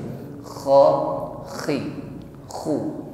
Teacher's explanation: Kalau kita keluarkan huruf kho dari tenggorokan paling ujung, kho, maka ngoroknya suaranya lembut. Kho. Tapi kalau terlalu ke bawah, ke pangkal tenggorokan, maka dia akan menekan berlebih.